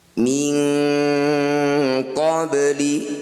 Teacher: cara bacanya bunyi nun sukun kita ganti jadi bunyinya jadi Eng dengungkan dua harakat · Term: bacaan Ikhfa